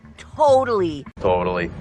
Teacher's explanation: second T pronounced as a fast d totally totally that's because the t comes between two vowels and the syllable before totally is stressed · in American English we often pronounce it totally with the second T pronounced as a fast d totally totally that's because the t comes between two vowels and